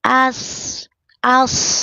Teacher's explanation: Istila terangkat pangkal lidahnya. As mesti ada hembusan napas kemudian mesti ada sofirnya. As desisan di awal ya.